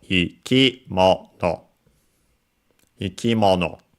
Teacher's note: The accent is on mo, the mono, when in this compound.